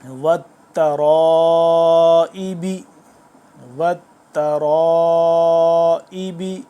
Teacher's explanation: آپ نے یہاں پہ یہ دھیان رکھنا ہے تا باریک ہے، را موٹا ہے